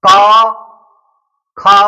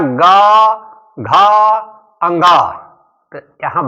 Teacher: तो निकट जब आ जाती है तो जो हम सांस फेंक रहे हैं तो इसमें कंपन होने लगता है स्वर तंत्री में। तो क ख में कंपन नहीं होता है बोलने में, लेकिन ग, घ और अंग बोलने में कंपन होता है। तो क ख को अघोष बोलते हैं, अघोष, उसमें घोष नहीं है, कंपन नहीं है।